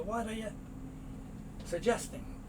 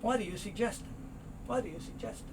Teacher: The T moves over, becomes a soft D. So you don't hear what are you, you hear what are you suggesting.